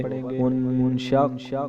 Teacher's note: پھر حمزہ کو ہم نون کے ساتھ ملائیں گے، ان حمزہ نون، اور شین قاف کے ساتھ ملائیں گے کیونکہ قاف کے اوپر تشدید ہے اس لیے قاف کو ہم 2 بار پڑھیں گے